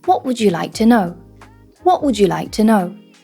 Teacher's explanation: these extra words, here we've got would, you, and to, we can call those grammar words. And they don't usually receive a beat in the rhythm.